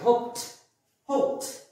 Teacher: ডিটা ট হয়ে যাচ্ছে